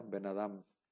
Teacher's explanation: benadam como si fuera una sola palabra y el acento se se elimina el acento de la primera y ya nada más se queda el acento en la segunda palabra · el tratamiento que se le debe de dar es como si fuera una sola palabra, se debe de pronunciar de corridito, no se pronuncia Ben y luego Adam, se pronuncia Ben Adam, como si fuera una sola palabra. · se elimina el acento de la primera y ya nada más se queda el acento en la segunda palabra. Y bueno, se fusiona como si fuera una sola palabra, pero sigue quedando este guión que se llama makef.